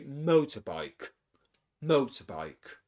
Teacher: So the main stress in the compound noun is mo, and we say motorbike.